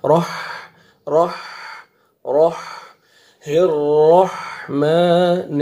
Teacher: را کو موٹا کر کے پڑھیں گے اور آگے ہا کا کلیئر ساؤنڈ آئے گا